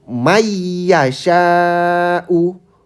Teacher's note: May yasyau bukan man. Jadi nun sukunnya dileburkan, dihilangkan jadi masuk ke huruf keduanya setelah nun sukun